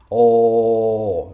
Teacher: The tongue is kind of shaping an U form at the back of the mouth. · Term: O sound